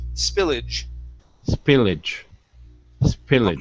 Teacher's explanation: the A-G-E here, we're actually going to pronounce like an I-J sound. So instead of spillage, it's spillage, spillage.